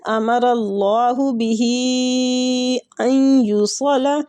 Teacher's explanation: بہ کے جو ہی کے اوپر جو مد ہے نا یہ بھی مد جائز منفصل ہی ہے